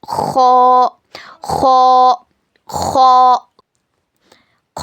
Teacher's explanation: हलक के ऊपर वाले सूखे हिस्से से ख अदा होगा।